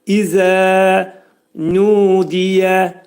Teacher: 2 səs qədər uzadılacaq. İzə pəltək zəni dedikdə dilimiz xəfif şəkildə 2 dişin arasına girərək pəltək zə şəklində oxuyacağıq.